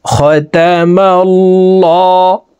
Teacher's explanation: আল্লাহ শব্দের আগের হরফে জবর আছে, এই কারণে এই লামকে ল অর্থাৎ মোটা করে পড়ব।